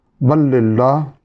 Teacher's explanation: یہاں لام ساکن کا لام میں ادغام ہو رہا ہے